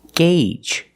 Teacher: the Au makes a long a sound gauge the long a like in day and say and pay